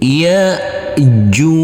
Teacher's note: ada Hamzah kecil yang bersukun ini maka tidak boleh dialirkan